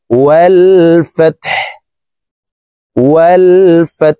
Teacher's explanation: ওয়াও লাম জবর ওয়াল, ফা তা জবর ফাত, ওয়াল ফাত, হা পেশ হু, ওয়াল ফাত হু, হাকে ওয়াকফের ক্ষেত্রে সাকিন করে ফেলবো